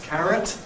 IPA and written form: ˈkærət (carrot)